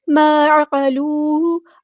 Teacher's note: عین کو وسطی لیکن مڈل تھروٹ سے ادا کرنا